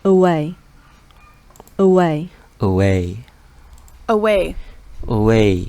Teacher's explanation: Jadi ini maksudnya adalah penekanan. Jadi dibacanya way, naik dari E ke way-nya.